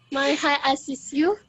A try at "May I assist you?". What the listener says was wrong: My is not mine, bukan my ya, tapi may. Tapi may I assist you?